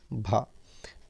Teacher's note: स्पर्श, घोष, महाप्राण और ओष्ठ व्यंजन ध्वनि है